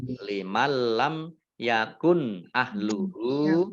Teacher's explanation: idgham bila gunnah, masuk dengan tidak mendengung, yaitu masuk nunnya tidak dibaca, langsung masuk ke huruf lam ditandai dengan lamnya ada tasdidnya. · Mim sukun bertemu dengan huruf ya, bacaan idhar, dibaca jelas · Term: idhar safawi